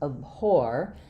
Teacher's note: So in the word abhor, we have second syllable stress, which means my letter A is not going to be the ah or the ah sound.